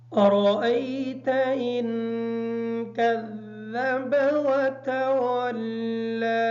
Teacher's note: ارأیت کی جو را ہے اس را کو پر پڑیں گے، ان کا غنہ مکمل کریں گے۔